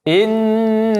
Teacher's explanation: innaha nun yang ada tasydid maka dilamakan lagi pengucapannya 3 sampai 4 harakat.